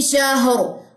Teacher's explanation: را جزم ما قبل جزم ما قبل زبر پھر را موٹی پڑی جائے گی